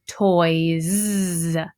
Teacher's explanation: The only difference now is because of this OY, vowel pair OY, this S is not going to say S, it's going to say Z. So my word toy changes to toys.